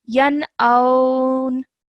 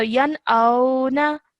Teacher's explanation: when we join the ya to the noon, on the noon we produce no nasal sound. So we would say yan aun.